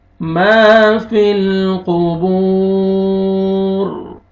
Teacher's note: Last में रॉ जब साकिन हो जाएगा तो रॉ को पुर करेंगे, क्योंकि वक्फ की सूरत में रॉ पुर हो जाएगा, क्योंकि उससे पहले पेश आ रहा है।